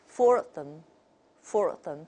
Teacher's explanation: and then an R sound is inserted for example for four of them four of them this is typical British